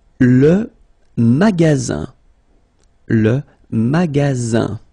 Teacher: you've got Only One S between two vowels then you get the sound Z